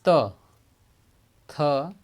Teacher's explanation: दंत यानी ऊपरी दांतों के निकट से बोला जाता है, दांतों के ऊपरी यानी ऊपरी दांतों के निकट, जैसे त, थ, इन दांतों के ऊपर से बोला जा रहा है जो दंत वर्ण है।